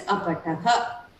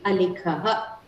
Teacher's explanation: So usually the Sakara, it becomes the Visarga.